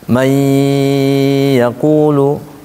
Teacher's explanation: Mai harus masuk ke hidung. Pertama dia harus masuk, kemudian ditahan. Karena babnya bab ditahan.